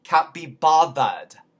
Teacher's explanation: remember the th in bother is a voice th bothered so it becomes a v